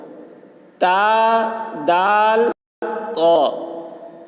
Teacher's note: ان تینوں کا مخرج زبان کی نوک اور سامنے کے اوپر کے دانتوں کی جڑ ہے۔ تا پتلی اور قا موٹی یعنی پر ہوتی ہے۔